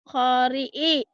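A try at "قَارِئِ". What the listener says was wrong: Kho apa kok, Bu? Qori'i panjang. Qori'i. Qori'i. Ko-nya panjang.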